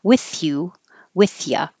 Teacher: you have to go from with your tongue out between your teeth with you and pull it back in for the Y.